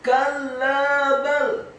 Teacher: Kalla bal, huruf kafnya dibaca tipis, fathah satu harokat, kemudian huruf lam alifnya ditasydidkan, ditekankan, dibaca tipis, fathah dua harokat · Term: saktah